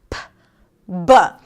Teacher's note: There's the P, which is the voiceless consonant, because it's just air. And there is the B, which is the voiced consonant. So the air comes out. The vocal cords are vibrating, b, and the air is released. · consonants that are produced at the lips and produced with a stop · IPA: /b/, /p/